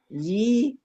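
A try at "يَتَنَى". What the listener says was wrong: Nah, gitu. Bagus.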